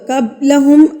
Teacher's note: قبلہم آواز کو روکنا نہیں ہے، یہاں پر ہم قلقلہ کریں گے. با ساکن ہے ہمارے پاس، تو با ساکن کو ہم ہلا کے پڑھتے ہیں، یعنی کہ اس پر قلقلہ کریں گے. · قاف کو ہم پور پڑھیں گے اور با پر ہم قلقلہ کریں گے، یعنی کہ اس کو مار کے پڑھیں گے